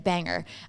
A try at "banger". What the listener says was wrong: There's no R. There's no R in